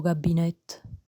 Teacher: the initial k sound in this word becomes voiced between vowels. You'll hear this quite a lot in Neapolitan.